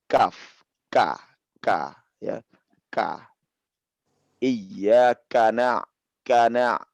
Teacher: Karena kaf ini pada saat dia kasroh ya atau dia fathah, dhammah ya, selain daripada sukun, dia harus juga keluar hamasnya.